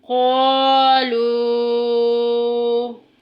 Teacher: اوپر مد بھی ہے، 2 سے 2.5 الف کے برابر، اس کو لمبا کریں گے